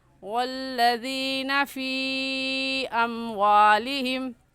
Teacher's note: فی ایک لفظ ہے اور اموالہم دوسرا لفظ ہے تو حروف مدہ کے بعد حمزہ اگلے کلمے میں ہے، اس وجہ سے اس کو مد منفصل اور مد جائز کہیں گے اور اس مد کو 3 الف کے برابر کھینچیں گے